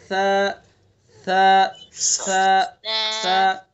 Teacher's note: جی ادا کیجئے گا، ثا ثا، نرمی سے، بالکل نرمی سے۔ زبان کی نوک کو ثنا علیا کے کنارے پر لگائیں گے، ادا کریں گے